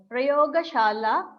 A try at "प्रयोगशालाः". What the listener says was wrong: Shalaha, that ha should not be pronounced distinctly. Just go along with the verb, the vowel. Utpitikaha, Prayogashalaha, not shalaha. We don't do say like that. It goes along with the vowel.